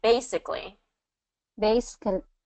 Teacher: Okay, and then basically is first syllable stress.